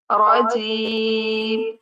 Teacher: रा पर जबर है तो इसे भी पुर पढ़ा जाता है।